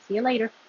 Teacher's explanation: If you say see ya later, the stress is on lay.